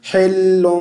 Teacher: آپ نے ہا کو ہے مجہول کر کے نہیں پڑھنا